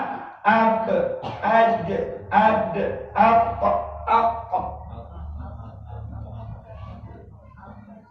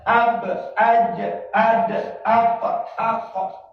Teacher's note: Jadi kalau bunyi qalqalah sugro itu tidak ada menahan langsung mantunya.